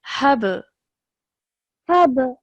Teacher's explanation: So because it has a sukoon, we have to produce a jerk sound when we're joining the ha to the ba.